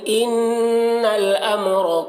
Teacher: ان نون مشدد غنہ ہوگا